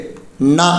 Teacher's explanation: நாவின் நுனி மேல்வாய் அண்ணத்தின் நடுப்பகுதியை தொடுவதால் பிறக்கும் எழுத்து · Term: மூணு சுழிநா, 3 சொல்லி நா